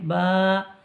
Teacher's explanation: দুই ঠোঁটের ভিজে অংশ মিলিত হয়ে উচ্চারিত হয়